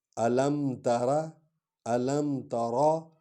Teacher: تے کو ہلکا پڑھیں گے، را کو پر پڑھیں گے